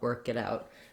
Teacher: you don't need a burst of air when you're linking your stop sounds at the end